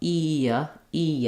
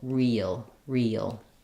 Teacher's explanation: uh sound or an uh sound before the l sound so as I move from the e to the uh e e I have a little bit of a linking with a Y sound there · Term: gliding Y